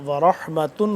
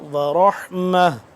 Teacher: جو تا ہے یہ اب ہا میں کنورٹ ہو جائے گا، اگر ملا کے پڑھیں تو ورحمتن ہوگا، اور اگر نہیں ملاتے وقف کرتے ہیں تو پھر ہو جائے گا ورحمہ